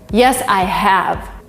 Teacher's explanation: you finished work compare this to the answer yes i have here have is strong vivid it is not weak at all you have a stress on it